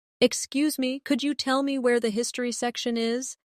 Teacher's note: In natural speech, could you becomes could ya.